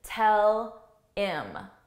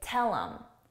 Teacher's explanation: I can't do that because there's a pause. I can take off the H only if I connect them.